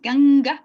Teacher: se pronuncia cerrando la garganta como si dijéramos ganga una vez esa es una n que se hace en la garganta no con la lengua en el paladar · es una m que se pronuncia cerrando la garganta